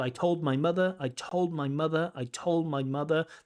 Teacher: When two things link together and one letter disappears. So the disappearance of the D accommodates the linking of told my mother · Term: accommodation